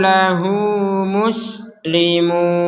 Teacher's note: karena ada tanda panjang maka kita memanjangkan dua harakat